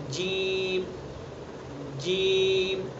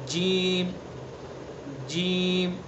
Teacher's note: جیم کا مخرج زبان کا بیچ اور اس کے مقابل اوپر کا تالو، یہ جیم کا مخرج ہے.